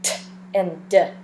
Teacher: uh that your your lips are partly open uhhuh and that your tongue is tapping right behind your teeth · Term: tongue Tapper